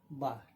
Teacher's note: दोनों होठ को मिलाकर ब अदा होती है।